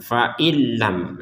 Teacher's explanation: Nun sukun bertemu lam. Masukkan nun kepada lam tanpa dengungan. Faillam. Nah, kalau sudah dimasukkan, maka nunnya ini sudah tidak terbaca fain ya, karena sudah masuk kepada lam.